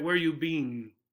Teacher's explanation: Other parts of the country, they make the two E's a long E sound, so it sounds like bean